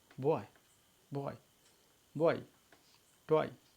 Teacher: ओ और आई, बॉय, ओ और आई के रूप में हम ओ और आई एक साथ संयुक्त स्वर डिप्थांग यहाँ पे बन रहे हैं